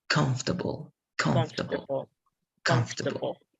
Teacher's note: The stress is going to be in the very first part. And remember that the middle is going to be cut off in many ways.